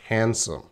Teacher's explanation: Handsome. You see that D, but we're not going to say the D at all. It is silent.